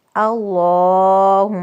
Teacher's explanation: اللہم میم مشدد میم پہ غنہ